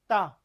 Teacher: जीहवा जो है आपकी दांतों को छूती है